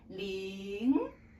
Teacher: rising tone which means you need to start lower and then go up. It's like in English you make a yes or no question.